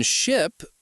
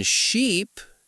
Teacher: In ship, we use a short I sound. In sheep, it's a long e,